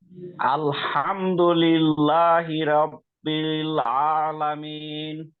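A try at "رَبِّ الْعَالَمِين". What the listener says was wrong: রব্বিল, র মোটা হবে, রব্বিল আলামিন।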